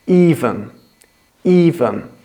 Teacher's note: Well, on these two words, the stress is on different syllables. In even, the stress is on the first syllable, even. But on event, the stress is on the second syllable, event, event, even, event.